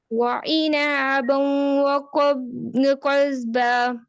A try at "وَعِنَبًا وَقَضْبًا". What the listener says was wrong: عینا نہیں کرنا، نون زبر نا کو لمبا نہیں کرنا، نون زبر نا، وعنبا، اینا نہیں، عنبا نون زبر نا، عنبا،